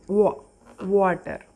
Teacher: W sound కూడా వస్తుందండి, కాకపోతే వ మనం వీన్ అనేటప్పుడు వ అంటామండి. W చెప్పేటప్పుడు వ మనం నోరు కొంచెం ఓ షేప్లోకి తీసుకొచ్చి అంటామండి